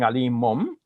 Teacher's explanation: Ali mun bi, it's smoother to say Ali mum bi, because with the bi, the lips are going to touch, and with the noon, the lips do not touch. So we're just preparing for the bi in advance by making the lips touch now, and then it produces an M sound instead of the N sound.